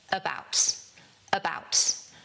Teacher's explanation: The stress is on the second syllable, 'bout. So, we say about. · And that first syllable is the schwa